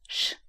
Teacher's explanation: in the northern part of Sweden, they only use a forward sound, which sounds like this, sh, like you're shushing someone